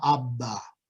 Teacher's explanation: B, lips closed, it's a stop after all, no noise. Then voicing starts immediately when you release the lips